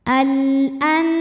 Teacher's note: alif lam menghadapi huruf qamariah yaitu Hamzah maka lam dibaca jelas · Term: alif lam qamariah, alif lam qamariyah